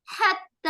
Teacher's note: حتی حلق کے بیچ سے آواز نکلے گی. حتی, تا کے اوپر شد ہے تو 2 بار اس کو ادا کریں گے.